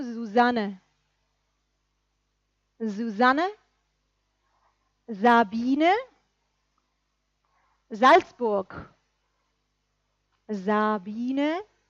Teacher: La S sonora. Z. La abejita, que tenemos en nombres propios como Susanne.